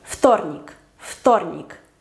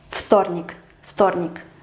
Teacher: como la T es sorda, la V no se puede pronunciar sonora, tiene que hacerse sorda. Su pareja es la F, entonces вторник, вторник.